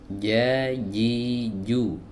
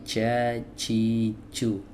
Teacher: Jadi tidak ada angin yang didorong keluar, disemburkan keluar. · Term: huruf jim